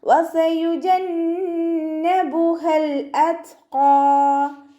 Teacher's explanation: വാവ് ഉച്ചരിക്കുമ്പോൾ ചുണ്ടുകൾ ഒന്ന് സർക്കിൾ ചെയ്ത് കൊടുക്കുക.